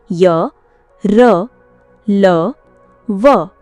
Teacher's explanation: अंतस्थ व्यंजन वे होते हैं जिनका उच्चारण स्वरों और व्यंजनों के मध्य का होता है। इनके उच्चारण में जीभ तालु, दांत और ओठों का आपस में पूरा स्पर्श नहीं होता, बल्कि निकटता होती है।